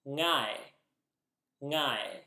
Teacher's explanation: This is the sound in the middle of the English word singer, for example. In English, we don't have the ng sound at the start of words, but in Sumerian you can.